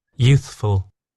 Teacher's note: there's a slight gap there to give your tongue the time and the ability to go from the TH sound to the F.